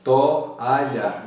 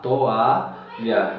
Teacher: Veja que to, aí depois eu separo e boto o a, toalha. Veja que houve uma separação entre a vogal O e a vogal A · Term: hiato